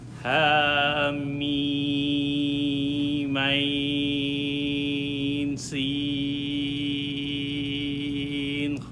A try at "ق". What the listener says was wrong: Yeah, but remember, it's qaf, not khaf. Qaf.